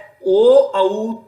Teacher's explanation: ओ और औ दोनों का कंठोष्ठ है।